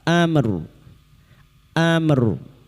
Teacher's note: Ra-nya kita baca tafkim karena didahului sukun yang sebelumnya berharakat fathah.